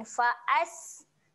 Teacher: Fa'as huruf sin ketika mati. Okey, sifat dia adalah keluar. Ha, kita kena keluarkan ha, sikit angin.